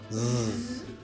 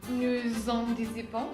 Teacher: Y si les dificulta pues diferenciar estos dos sonidos, el s y el z, de hecho son dos sonidos que se pronuncia de manera igual, nada más que el z se escucha y se siente ahí como la vibración en la garganta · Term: sonido z